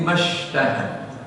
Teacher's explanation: Dan ma-nya tidak dibaca panjang ya, langsung lebur dalam shin mashtahad ya. Wa hum fi mashtahad, bukan ma ishtahad gitu ya, atau ma ishtahad ya.